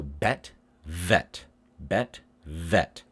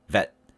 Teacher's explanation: So I make my V's a little bit longer so you can hear the V sound. If you make it short, vet, then it becomes harder to hear.